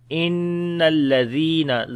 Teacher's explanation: Noon has a shad sign, we make gunna.